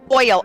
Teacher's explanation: So the reason a diphthong is because what's happening with your articulators, your tongue, your mouth, is that your tongue basically has to move from one vowel to the next